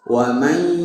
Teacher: Harusnya wa may masuk ke hidung karena dia khaysum gunnah. Namanya juga ma'al gunnah, disertai dengan gunnah, disertai dengan ke hidung.